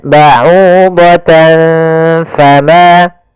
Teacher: Cara membacanya adalah menyamarkan suara tanwinnya kepada huruf fa. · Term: ikhfa